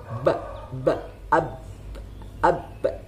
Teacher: ba itu bersifat jahar, artinya tertahannya nafas saat mengucapkan ba